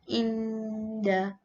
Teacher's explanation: Hukum tajwid yang seterusnya adalah ikhfa hakiki. Ia perlu dibaca secara dengung sepanjang 2 harakat.